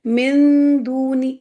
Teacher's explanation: نون کو وقت تو دے رہی ہیں لیکن نون کے مخرج پہ نہیں جانا ہے. نون کی آواز نہیں آنی چاہیے. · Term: اخفا